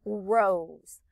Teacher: i hear a long o and it sounds like a z to me